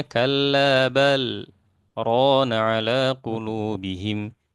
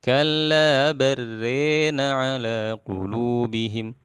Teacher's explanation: Kalau Imam Syu'bah membacanya dengan idgham ya, lam ketemu ra ini idgham ya kamil. Nah, dan diimalahkan.